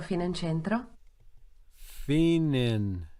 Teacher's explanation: the trailing vowel on the preceding word gets lost if the following word starts with a vowel. That seems to be the pattern anyway.